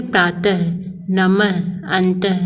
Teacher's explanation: जब हम इन्हें बोलते हैं तो हमारे मुंह से हा का उच्चारण आता है, जैसे प्रातः, नमः, अंतः, हा का उच्चारण आ रहा है ना, तो फ्रेंड इसे विसर्ग कहते हैं।